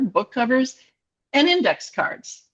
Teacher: Notice that at the end of my utterance, then my intonation goes down at the end.